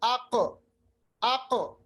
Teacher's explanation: واپس آواز کو واپس لانا ہے، ریباؤنڈ کرنا ہے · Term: قلقلہ